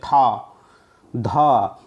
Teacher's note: महाप्राण ध्वनियों की विशेषता ये होती है कि उसका जब उच्चारण करते हैं तो अंत में हकार जैसी ध्वनि उत्पन्न होती है। हकार मतलब हा जैसी ध्वनि आती है, जैसे था, धा, ऐसे।